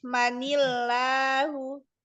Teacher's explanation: Kalau ketemu lafaz Allah jadi dia tipis manillahu. Kalau ketemu ikfa juga langsung bukan i tapi ni.